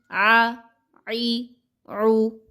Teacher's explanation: عین زبر آ، عین زیر عی، عین پیش عو، آ عی عو. عین کو اس کے مخرج سے نکالیے گا بہت توجہ کے ساتھ وسط حلق سے